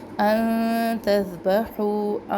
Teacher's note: ان نون پر ہم اخفا کریں گے، باریک اخفا ہے کیونکہ تا باریک حروف میں سے ہے